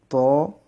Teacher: ত আওয়াজটা মুখের ভিতরে মোটা হয়ে উচ্চারণ হবে